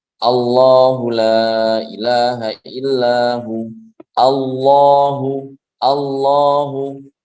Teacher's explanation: Ketika jatuh di awal pembicaraan. Jadi ketika mulai pembicaraan dengan lafzul jalalah, maka lamnya ini dibaca tebal. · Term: tafkhim